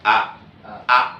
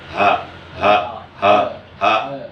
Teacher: Yang 2 huruf yang adanya di adnal halqi, di pangkal tenggorokan, di tenggorokan bagian bawah itu hamzah dan ha.